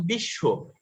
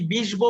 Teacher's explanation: ব ফলা যুক্ত হওয়ার কারণে তালব্য শকে দুইবার বলি